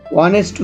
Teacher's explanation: এখানে যখন আমরা honest উচ্চারণ করতেছি তখন এইচটি উচ্চারণ হচ্ছে না, তারপরে যে ভাওয়াল রয়েছে ও সেটিকে উচ্চারণ হচ্ছে honest।